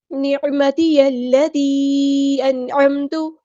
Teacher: عین کو وسطی لیکن مڈل تھروٹ سے ادا کرنا ہے۔ یا کو ہم نے لام کے ساتھ ملا دینا ہے، حمزۃ الوصل ہمارا ڈراپ ہو جائے گا۔